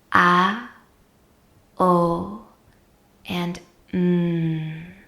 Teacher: ohm is actually comprised of three separate syllables ah-oh and mmm with the lips closed